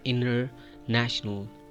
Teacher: Inner national. Make the link of N sound to R.